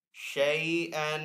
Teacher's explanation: تو ہے وقف مطلق کا سائن وقف کرنا بہتر ہے. وقف کرنے کی صورت میں حمزہ کے اوپر جو دو زبر ہیں اس کو ایک الف سے بدل کر پڑھیں گے. شَيْئًا وقف کی صورت میں شَيْئًا.